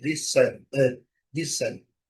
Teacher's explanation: E temos também a letra T, que não é pronunciada